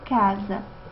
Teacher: quando nós pronunciamos esse a final ele não tem a mesma vibração não as pregas vocálicas não vibram